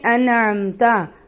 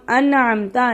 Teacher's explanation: یعنی ناک میں آواز نہیں لے کر جائیں گے اور غنہ بھی نہیں کریں گے۔ جیسے انعمتا، اب ہم انعمتا نون ساکن کے بعد عین حروف ہلکی میں سے ہے، اس لیے یہاں ہم غنہ نہیں کریں گے۔ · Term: اظہار ہلکی